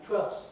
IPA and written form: twelfθs (twelfths)